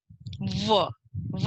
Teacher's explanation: वह है दंतव्य और औष्ठव्य, जो दांत और ओष्ठ दोनों से जिसका घर्षण होता है उससे उच्चारण होता है